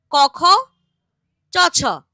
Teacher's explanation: এদের উচ্চারণে স্বরতন্ত্রের ঘোষণ নেই ফলে এরা গাম্ভীর্যহীন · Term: অঘোষ ধ্বনি